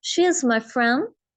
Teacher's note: शी को खींच रही हूँ, फ्रेंड को खींच रही हूँ. इज माई, इन दोनों को मैं नहीं खींच रही ना